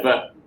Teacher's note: Ver requires the vocal cord vibration.